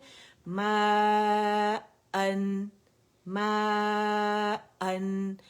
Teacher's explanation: جو آ کی آواز ہے, مد کی آواز ہے, وہ منہ کے سامنے سے نکل رہی ہے